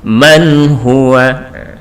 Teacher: tanpa ada dengungnya sama sekali jadi manhua tapi tidak juga dengan harus terlalu ditekan yang terkait